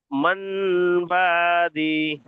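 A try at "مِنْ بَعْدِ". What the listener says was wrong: মান হবে না। দেখেন, তানবিনের পরে বা এসেছে, তাই তানবিন, এই নুন সাকিনের পরে বা এসেছে, তাই নুন সাকিনকে মিম দ্বারা পরিবর্তন করে পড়তে হবে। মিম বাদি, মিম বাদি। টান হয়ে যাচ্ছে, বা দি, টান হয়ে যাচ্ছে, বা দি, বা দি, মিম বা দি।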